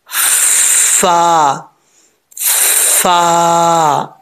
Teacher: वाले जो दो दांत हैं उनका जो नीचे वाला किनारा है ऊपर वाले दांतो का नीचे वाला किनारा नीचे वाले जो होठ है उनकी तरी वाली जगह पर मिलेगा लगेगा ये फा पढ़ा जाएगा फा फा ठीक है होठ गोल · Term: फा का मखर